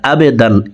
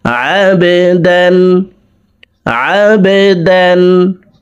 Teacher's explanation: আইনকে হালকের মধ্যখান থেকে উচ্চারণ করব কারণ আইনের মখরাজ হলকের মধ্যখান থেকে হবে।